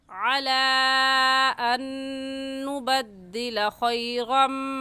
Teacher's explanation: ये नून देखने में एक है और पढ़ने में 2 मरतबा पढ़ा जाएगा, एक मरतबा नून के साथ मिलाकर और दूसरी मरतबा खुद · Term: इदगाम